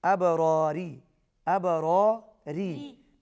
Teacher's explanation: با پر قلقلہ ہوگا، پہلا را پر پڑھا جائے گا، دوسری را باریک پڑھی جائے گی.